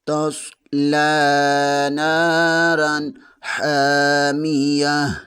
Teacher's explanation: نون زبر کے آگے الف مدہ ہے، اسے 1 الف کے برابر کھینچ کر پڑھیں گے۔